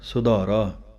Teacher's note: ਧੱਦੇ ਦੀ ਆਵਾਜ਼ ਦੇ ਕੇ ਬੋਲਣਾ ਹੈ। ਸੁਧਾਰਾ, ਭਾਰਾ ਕਰਕੇ ਬੋਲਣਾ ਹੈ